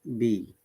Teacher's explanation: when you're trying to pronounce B, we're blocking the air. We block, then we release the air. Okay, B. Basically, I don't release it, so it's better not to release the air so that it is pronounced clearly.